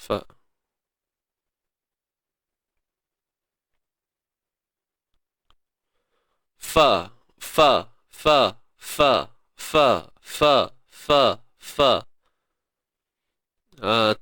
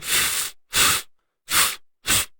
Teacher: Ni, af, af. Mesti bersentuhan punya. Bibir bawah dengan gigi kacik atas ni. Mesti kena. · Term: huruf fa